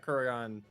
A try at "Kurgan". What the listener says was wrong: It's Kurgan. It's just Kurgan. It's not Kurragon. Kurgan. It's Kurgan. Or Kurgan. But you guys are adding an extra letter in there.